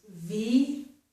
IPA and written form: vi.ɪ.kl̩ (ve-hi-cle)